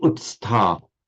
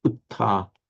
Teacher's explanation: where you get a s between two stops, between two t's, it disappears. That's why you get utta, to stand up.